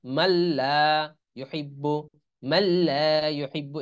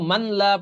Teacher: এই জন্য এই নুনের উচ্চারণ আসবে না, যেমন মিম লাম জবর মাল, এই নুনের আর উচ্চারণ আসছে না। আমরা পড়েছিলাম কি যে এই সাকিন আর তাজদিদ একসাথে আসলে তখন ওই সাকিনটা উচ্চারণ আসে না।